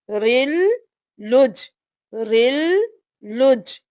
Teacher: اب جب ہم ملائیں گے تو ہم بحرن نہیں کریں گے، را کو لام کے ساتھ ملائیں گے، بحرل۔ اب لام ہو گیا رل کے ساتھ، پھر لام پیش جیم پہ تشدید ہے، جیم سے ملائیں گے، لام کو جیم کے ساتھ، پہلے را کو لام کے ساتھ ملایا، دوبارہ لام کو اپنی حرکت کے ساتھ پڑھ کر جیم کے ساتھ ملایا، رل لج، رل لج۔